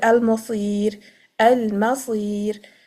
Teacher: So when you're stopping, you make the tarqiq because of the ya before it, mad ya before it. But waslan, when you're continuing, the ra is carrying a dhamma, so it will be read with full tafkhim.